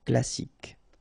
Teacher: You don't insist on the final E, so you get K as the last sound.